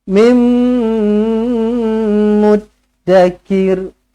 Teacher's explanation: Kalau mim mati, rapat bibir sahaja tetapi tidak perlu didengungkan. Mim sabdu, rapatkan bibir, dengungkan 2 harakat. Bermakna rapatkan bibir tu lama sikit, 2 harakat.